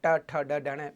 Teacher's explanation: तो ऊपर का जो खोखला भाग है, वहां पे जीभ मुड़ करके आगे टच करती है। ट ठ ड ढ, जीभ को ऊपर टच किए बगैर बोलो आप ट वाली लाइन नहीं बोल पाओगे।